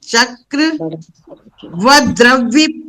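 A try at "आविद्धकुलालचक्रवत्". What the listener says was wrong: आविद्ध, कुलाल, चक्रवद, चक्रवद एक साथ।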